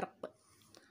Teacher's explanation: क़लक़ला होता है कि हम आवाज़ जो है वो टकरा कर वापस आती है।